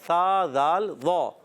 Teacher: ذال الف زبر ذا، ذال کا مخرج زبان کا سرا، یہ زبان کا سرا اوپر کے دانتوں کے کناروں سے، اندرون کنارے سے لگا لیں تو ادا ہوتا ہے